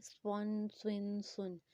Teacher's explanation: موٹا کر کے پڑھیں گے اور وسل ساؤنڈ کے ساتھ پڑھیں گے۔